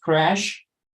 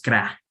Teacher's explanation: se pronuncia un poco como si fuera la E con la A. Entonces no es cra, es crea, como si eras crear, ¿no?